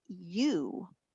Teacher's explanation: When I say you, it's the fastest moving one of them all. I start smiling, you, and I very quickly go to a round puckered position. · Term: diphthong